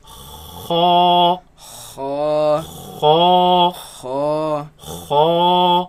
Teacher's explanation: the root of the tongue raises against the uvula, and the commotion is what makes this sound. Now it should be a soft sound.